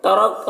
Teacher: را کو پر پڑھیں گے اور یہاں پر وقف کریں گے تو کاف کا زبر سکون سے بدل جائے گا